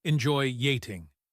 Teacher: When we say enjoy eating, we say enjoy yating. The /J/bridge appears again because of the /OI/ ending.